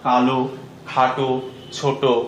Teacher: এর শেষে অ আছে এবং অ এর উচ্চারণটা ও এর মতো